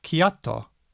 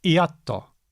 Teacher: When there's a k in Tongan, we see a glottal stop in Samoan.